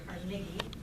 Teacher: The Scottish pronunciation was probably Carnegie, with the emphasis on the second syllable.